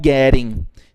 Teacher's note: quando tiver dois T's utilizando lá dentro dessa palavra, esses dois T's terão um som de R